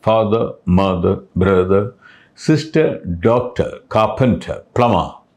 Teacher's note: At the end, if there is an R, no sound at all.